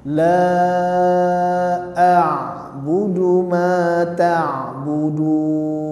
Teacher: Ain di sini jangan diputus seperti kita ucapkan a lah tapi tetap disukunkan tapi seperti mengalir jadi tidak terputus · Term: huruf Ain